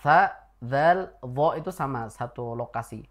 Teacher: ujung lidah bertemu dengan ujung gigi seri atas sama dengan tsa.